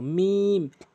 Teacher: দুই ঠোঁটের শুকনো অংশ, মিম।